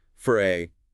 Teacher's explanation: It is the sound of absolute muscular neutrality. To produce the schwah, your tongue just rests right in the center of your mouth. Your lips are totally relaxed, not rounded or stretched.